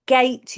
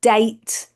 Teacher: Fronting is when all of our sounds that are produced down here at the back, C and G are produced as T and D. So instead of go, we'd have do.